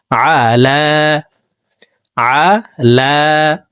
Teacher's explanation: আল্লাহুম্মা সল্লি আলা, এখানে আলা পড়া যাবে না, আইন হরফকে হলকের মধ্যখান থেকে উচ্চারণ করব